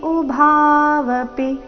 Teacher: ಉಭಾವಪಿ ಅಂತ ಪಿ ನ ದೀರ್ಘ ಹೇಳಬಾರದು ಪಿ ರಸ್ವ ಬರಬೇಕು